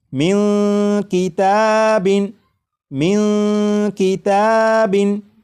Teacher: آ چکا ہے، لہٰذا اس نون ساکن میں اخفا ہوگا، یعنی اس نون ساکن کی آواز کو ناک میں چھپا کر غنہ کر کے پڑھیں گے